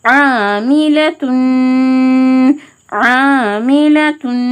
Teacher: எந்த சேஞ்சஸுமே இல்லாமல் நூனை ஒரு அலிஃப்க்கு நிகராக மூக்கில் நிறுத்தி குன்னா செஞ்சு ஓதணும்